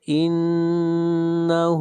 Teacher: فاسلکوہ انہ نون کے اوپر شد ہے، غنہ کریں گے، انہ ہا کو کھینچ کر پڑھیں گے ایک الف کے برابر